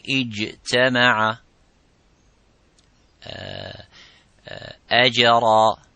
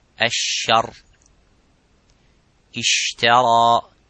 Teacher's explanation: But the sheen has a gap, and that let the air slightly go.